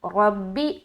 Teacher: रा को मोटा रखेंगे क्योंकि ज़बर है, बा से मिला दिया। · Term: रा पुर